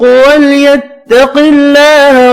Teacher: اللہ کا نام زیر کی وجہ سے باریک پڑھیں گے